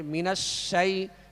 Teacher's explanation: شین کی آواز جو ہے آواز منہ میں پھیل کر ادا ہوگی